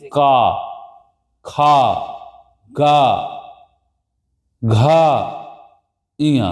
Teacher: कंठ ध्वनि का मतलब होता है जिनका उच्चारण सीधे गले से निकले।